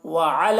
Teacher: العین کو حلق سے ادا کریں گے اور یہاں پر یا کو نہیں پڑھنا ہے، لام کو لام سے ملا کر پڑھیں گے اور اللہ کے لام کو پر پڑھیں گے۔